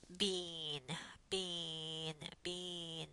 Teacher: before a nasal consonant the vowel becomes nasalized